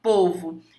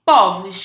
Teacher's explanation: quando você fala pô você fala contigo né fechado povo e quando você volta no plural Você fala o que povos com timbre aberto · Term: plural metafônico